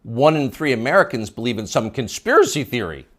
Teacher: the upspeak, the rising inflection at the end of the sentence